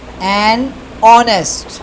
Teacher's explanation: the initial consonant H is not pronounced